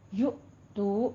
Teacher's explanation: यु में हमजा साकिन है, थोड़ा सा झटका देकर पढ़ेंगे